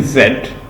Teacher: this sound is made with your lips in a slight ग्रिमस and the mouth is open wider देन in A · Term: शॉर्ट वावल